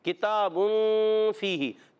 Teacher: اخفاء کی معنی چھپانا، نون کو چھپا کے ادا کرتے ہیں اور غنہ کرتے ہیں. ٹھیک ہے، ایک الف کا غنہ کریں گے.